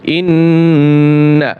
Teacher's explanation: নিয়ম আলফা হামজা নুন ইন্জিব গুন্না হবে নুন জবর না ইন্না টান দেওয়া যাবে না শুধু গুন্না আছে